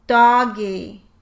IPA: dɑ-ɡɪ